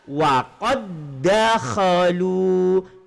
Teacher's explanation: Asal dia kan waqad dakhalu. Dal mati bertemu dengan dal. Maka di sini hukum qalqalah hilang. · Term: idgham mutamasilain